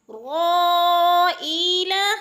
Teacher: مد ہو رہی ہے، مد متصل، 5 حرکات کے برابر کھینچ کر پڑھنا ہے